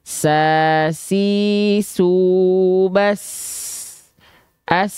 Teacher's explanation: ketika kita ee lafalkan dia nafasnya mengalir dengan deras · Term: huruf Sin